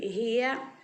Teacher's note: हा ज़ेर ही, या ज़बर या, ज़ेर को भी नहीं खींचेंगे और ज़बर को भी नहीं खींचेंगे